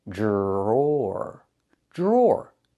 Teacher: The dr makes a j sound like in juice and jump.